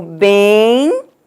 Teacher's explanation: nós pronunciamos um I, então, na oralidade é que nós vamos encontrar o ditongo